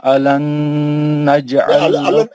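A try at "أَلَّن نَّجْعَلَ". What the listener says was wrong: अलन नहीं है, अल्लन। तजदीद को 2 बार पढ़ना है ना यार, अलन है वो, अल्लन है ना,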